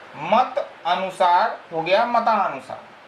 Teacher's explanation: पहले पद की अंतिम ध्वनि अ और बाद के पद की पहली ध्वनि अ, ये दोनों मिल करके हो जाते हैं आ। तो हो गया मत अनुसार, हो गया मतानुसार, और ये अ जो है यह गायब हो गया।